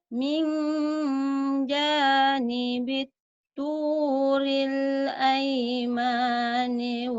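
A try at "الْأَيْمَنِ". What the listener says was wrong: Aimani, pendek. Aimani, kenapa ada yang manjang?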